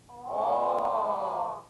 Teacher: The midway lip opening produces the vowel sound aw, as in ball. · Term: number 3 vowel